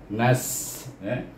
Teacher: huruf nun dimatikan dengan huruf sin, mesti bunyinya mati dengan hamas dan safir